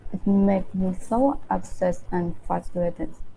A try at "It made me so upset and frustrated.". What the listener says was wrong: Yeah, really enunciated. So upset and frustrated. Yeah, so in native English, especially when we're talking about our emotions, we tend to really emphasize it. Like, I'm so upset right now. So we tend to really kind of emphasize emotions in English.